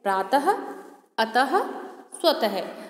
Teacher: इसका उच्चारण कंठ से होता है। कहाँ से होता है? गले से होता है। इसे बोलते समय हा की आवाज़ आती है और इसका चिन्ह होता है दो बिंदियाँ।